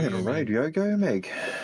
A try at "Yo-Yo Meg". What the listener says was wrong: Yogo. It's Yo-Yo Meg. No, you said Yogo like yogurt. Yogurt Meg is what you just called it, essentially. Yo-Yo Meg.